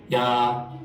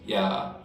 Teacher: if I do it with creaky voice, ya, it means he wears